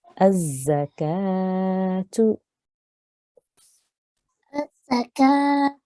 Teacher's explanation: really good elongation with the kaf there, which has our vertical fatha on the top